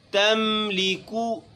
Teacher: اس کاف کو چونکہ اس کے اوپر پیش ہے اس میں ہونٹوں کو گول کریں گے اور ضمہ یعنی پیش کی جو ادائیگی ہے اس کو پوری طریقے سے اچھی طریقے سے کریں گے۔